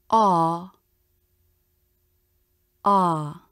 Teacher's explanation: the ah as in father vowel where the lips and cheeks are totally relaxed